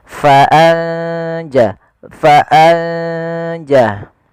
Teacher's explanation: bacaan Ikhfa yaitu kita samarkan ke huruf setelahnya kalau di sini huruf Jim maka nunnya samarkan ke huruf Jin